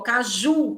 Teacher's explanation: Quando eu digo ó, caju, quem é a sílaba mais forte? O ju.